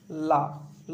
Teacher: जिस वर्ण के उच्चारण करते समय जिह्वा के अगल बगल से वायु बाहर निकलती है उसे पार्श्विक वर्ण कहा जाता है, जिससे ला ला बोलते हैं तो इसके अगल बगल से वायु बाहर निकलती है, इसे पार्श्विक वर्ण कहा जाता है।